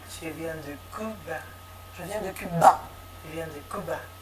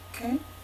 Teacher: Par exemple, l'hispanophone qui prononce la voiture, il prononce la voiture, donc je peux répéter voiture, il y a peu de chances qu'il corrige lui-même, tout simplement parce qu'il n'entend pas. Ce U n'étant pas un phonème identifié en espagnol, voilà, il glisse vers le phonème le plus proche, en l'occurrence le OU.